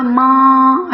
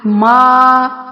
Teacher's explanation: میم کھڑا زبر ما، اس کو ناک میں نہیں پڑھنا